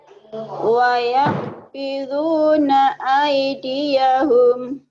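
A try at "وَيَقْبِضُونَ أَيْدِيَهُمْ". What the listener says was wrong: Wayak bidu, bukan wayah. Wayak. Wa yaqbiduna aydiyahum.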